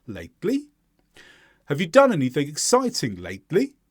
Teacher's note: the intonation on the final word changes and now the emphasis is on the second syllable